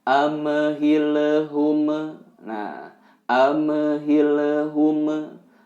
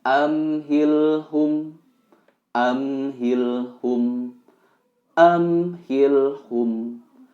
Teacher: amhilhum semuanya sukun tanpa pantulan